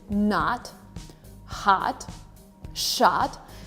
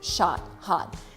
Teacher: So the O in the word is pronounced as ah, shot, hot.